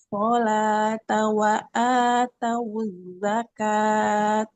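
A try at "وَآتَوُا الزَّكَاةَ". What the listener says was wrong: Huruf zainya Ibu. Wa atawuz zakah. Za. Kalau berhenti ini jadi huruf H ya, tak marbutoh namanya. Jadi huruf H kalau kita wakof.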